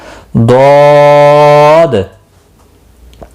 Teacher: ضا آگے دال، ضاد، تو یہاں پر بڑی مد لگتی ہے، دال ساکن رہتا ہے وقف کی صورت میں، اور اس لیے اس پر قلقلہ بھی ہوتا ہے